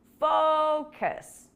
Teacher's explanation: the stress is on the first syllable focus focus on your English fluency and you'll see improvements in